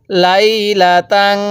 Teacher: এই তানবিনটা নাকের বাঁশি দ্বারা গুনাহ করব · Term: গুন্নাহ